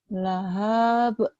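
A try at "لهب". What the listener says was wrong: Pendek, nggak ada yang panjang. Lahab.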